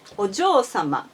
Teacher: However, as for this one, お 嬢 様, you never ever make this O long.